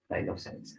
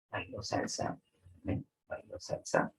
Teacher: hay una entonación descendente y una entonación ascendente